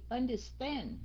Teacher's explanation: understand nhấn âm thứ ba